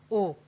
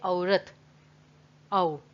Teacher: तो औ यानी कि अ और ओ दोनों का उच्चारण हम कर रहे हैं